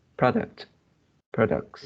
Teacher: Uh, yeah, this is a noun form of uh, this word, so it is the stress is at the first syllable